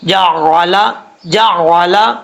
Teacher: مدہ ایک الف کی مقدار، جعل، جیم کے بعد عین ہے، عین کو اپنے مخرج سے ادا کرنا ہے، حمزہ کی آواز نہیں آنی چاہیے